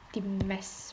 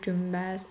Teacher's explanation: Əgər n-dan sonra b, m gəlirsə, n avtomatik olaraq m-ya keçir.